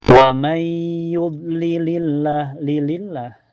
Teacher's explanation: di lafaz Allah dibaca tarqiq ya, tipis. Sebabnya sebelumnya berharokat kasrah.